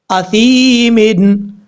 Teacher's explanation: کیونکہ یا ساکن سے پہلے زیر ہے، اس لیے یہ یا مدہ ہے، ایک الف کی مقدار لمبا کر کے پڑھا جائے گا، یہی یا مدہ کی تعریف ہے، یعنی یا ساکن سے پہلے زیر ہو تو یا مدہ ہوگا۔